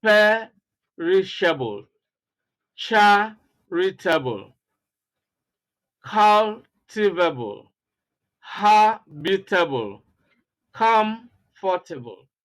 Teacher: See, stress on the first syllable